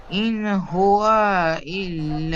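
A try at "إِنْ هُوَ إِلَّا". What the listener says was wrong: ইন হুয়া, আবার ওয়াও টান হয়ে গিয়েছে। ইন হুয়া, ইল্লা খাড়া যাবার একাই টান হবে। ইন হুয়া ইল্লা যিকরুল লিল আলামিন।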